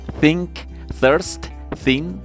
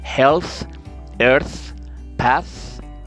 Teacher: passage of the airstream but not making completely closure so that the air moving through the mouth generates audible friction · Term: fricative sound